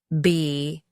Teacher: the sound is produced by bringing both lips together and you should feel a slight buzz in your vocal cords